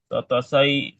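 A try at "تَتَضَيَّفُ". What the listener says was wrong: tatadayyafu itu huruf dot ada titiknya tuh. Tadoyyafa ya tadoyyafu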